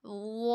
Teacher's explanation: मोटा भी हो रहा है और साथ सीठी भी नहीं आ रही